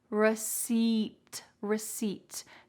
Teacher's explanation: that second word receipt so many letters that are cut out so the p is cut out and the e i is just an e sound